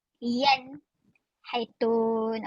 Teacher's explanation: Yan haitun tu nun mati bertemu dengan ha yan haitun. Okey, jelas tidak dengung.